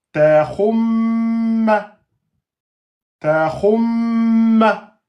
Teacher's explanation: Et donc un mim shadda, c'est 2 temps.